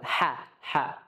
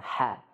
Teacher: H, ya. Yang mana H itu keluarnya dari tengah tenggorokan.